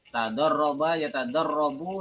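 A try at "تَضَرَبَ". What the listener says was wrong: Duna tasdid akhi. Berarti tadoroba nggak pakai tasdid. Nanti beda lagi kalau ada tasdid akhi. Tadoroba hakada.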